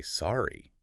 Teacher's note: with a rising tone